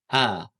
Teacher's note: makhrajnya itu adalah di pangkal tenggorokan teman-teman atau di bagian bawah tenggorokan A ya. Jadi di bawah tenggorokan sini A. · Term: Hamzah